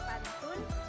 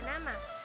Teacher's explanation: ujung lidah sebagai artikulator menyentuh kaki gigi atas sebagai titik artikulasi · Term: bunyi apikoalveolar